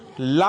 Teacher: पार्श्विक व्यंजन ला है